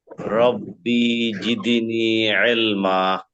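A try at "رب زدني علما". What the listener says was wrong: রব্বি টান হয়ে যাচ্ছে, টান হবে না। রব্বি জিদনি। হ্যাঁ নি এখানে টান হবে। রব্বি জিদনি এখানে টান হবে, রব্বিতে হবে না।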